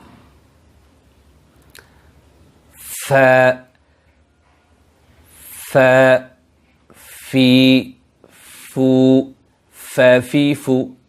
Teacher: ফায়ের মাখরাজ হলো নিচের ঠোঁটের পেট সানায়ে উলিয়ার আগার সাথে লাগাইয়া বা সামনের উপরে 2 দাঁতের আগার সাথে লাগাইয়া ফা উচ্চারিত হয়।